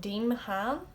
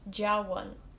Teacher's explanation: The DE is like J, and then the MH followed by a broad vowel, which in this case is A, is like a W.